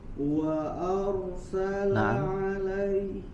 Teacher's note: jadi dari suara huruf roh ke huruf sinnya tidak ada jeda